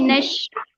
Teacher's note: नून को शीन से मिला देंगे डायरेक्टली। अलिफ और लाम जो है वो नहीं पढ़ा जाएगा, हुरूफ बोल शमसी में अलिफ दो। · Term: हुरूफे शमसी